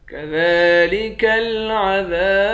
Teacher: ذال پر کھڑا زبر ہے، کھڑے زبر کو ایک الف کے مقدار کھینچ کر پڑھتے ہیں۔